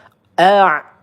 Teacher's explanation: Hul a' a di sini ain hati-hati ya. A nah ain itu di tengah tenggorokan ya